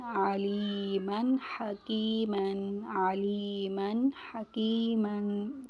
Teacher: یہاں حروف پر تنوین دو زبر دو زیر دو پیش کے بعد حروف حلقی میں سے حرف آ رہا ہے تو یہاں غنہ نہیں ہوگا بلکہ اظہار ہوگا، یعنی تنوین والے حروف بغیر غنہ کے پڑھیں گے